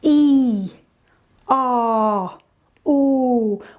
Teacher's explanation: Think of E, R, oo, those kind of sounds. And notice how they're just one sound that we're holding, E, R, ooh. We're not moving our mouth after we've started. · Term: long vowel sounds